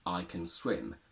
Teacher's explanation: I only say I can swim where can is weak and I would never really stress it